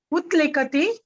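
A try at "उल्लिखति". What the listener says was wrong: Now when you say utlikati, is it easy to say? Does it flow off the tongue? Utlikati doesn't flow, no? ullikati. It becomes ullikati.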